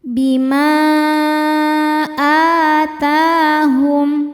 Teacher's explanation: Mad tobi'inya alif didahului fathah pada kata pertama yaitu bima, sedangkan hamzahnya adalah a pada kata kedua yaitu atahum. Maka mimnya panjang, boleh 4 boleh 5 harokat. Bima atahum, a hukumnya mad badal karena ada hamzah yang dipanjangkan. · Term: mad jaiz munfasil